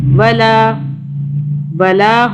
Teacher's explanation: لام کے آگے یہ الف آ رہا ہے، ایک الف کے برابر کھینچا